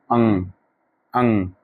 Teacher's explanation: अनुस्वार का उच्चारण स्थान नासिका है